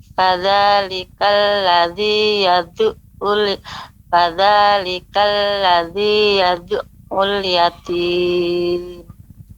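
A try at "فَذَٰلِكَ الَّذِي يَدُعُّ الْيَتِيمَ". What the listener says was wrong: Ya, pengucapan yadu'u ini masih yadu'u, ya. Kalau pengucapannya tanpa ada pantulan, hampir mirip seperti alif atau hamzah. Yadu'u. Yang benar yadu'u. Fadzalikal ladzi yadu'ul yatim.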